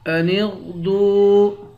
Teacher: غین کو موٹا پڑھیں گے، دال کو واو کے ساتھ ملا کر واو کو ایک الف کے مقدار کھینچ کر پڑھیں گے